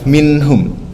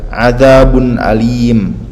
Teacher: Coba perhatikan bunyi nunnya jelas enggak ditahan, enggak didengungkan. That's what we call clear pronunciation. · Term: izhar